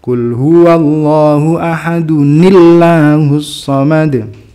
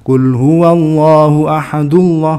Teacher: Nun sukunnya itu di kasr kalau dia setelahnya itu bertemu dengan Hamzah wasl dalam hal ini bertemu dengan lafzul jalalah maka menjadi ahadunil gitu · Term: nunnya dikasra